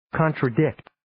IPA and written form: ,kɑːntrə'dɪkt (Contradict)